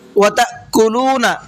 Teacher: حمزہ کو جھٹکے کے ساتھ میں پڑھنا ہے، کیسے؟ تا اس طرح سے جھٹکے سے پڑھنا ہے۔